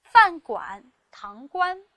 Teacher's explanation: 第一个是第三声，堂倌是第一声